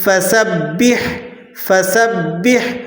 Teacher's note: سین کو آپ نے باریک پڑھنا ہے اور با کو ذرا سختی سے ادا کریں گے کیونکہ تشدید ہے